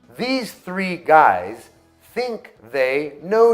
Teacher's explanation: Colocar a língua entre os dentes e forçar o ar a sair entre o espaço entre a língua e os dentes.